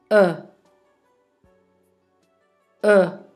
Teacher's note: Le son E se prononce avec la bouche légèrement ouverte et les lèvres arrondies.